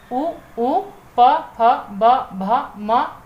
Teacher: उ, प, फ, ब, भ, म जो आपके वर्ण है यह आपके ओष्ठ दोनों ही होठों की सहायता से बोले जाते हैं तो आपके यह ओष्ठीय कहलाते हैं।